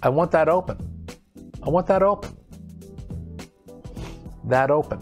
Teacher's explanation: i want that open but we connect that with open so it sounds like that open so the sentence sounds like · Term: linking